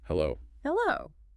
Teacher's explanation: You raise the pitch of your voice slightly on the second syllable. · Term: rising tone